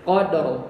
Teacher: ada roh sukun, sebelumnya fathah atau dhammah, maka roh sukunnya tebal. Yang membuat dia tebal adalah lidah belakangnya naik atau lidah tengahnya itu membuat cekungan gitu ya. Lidahnya itu cekung gitu ya.